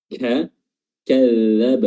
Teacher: huruf kaf disertai dengan hams, udara.